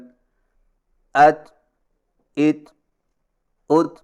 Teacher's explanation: زبان کی نوک تالو پر سختی سے لگنے کے فوراً بعد معمولی سی گھساہٹ ہو